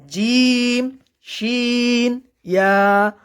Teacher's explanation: জিমের মাখরাজ হলো জিহ্বার মধ্যখান তার বরাবর তালুর সঙ্গে লাগাইয়া অর্থাৎ তার বরাবর উপরে তালুর সঙ্গে লাগাইয়া তিনটি হরফ উচ্চারণ হবে।